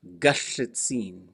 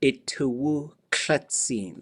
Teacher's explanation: So G can become a K, especially if if a vowel pops up right before it, it'll switch to a K.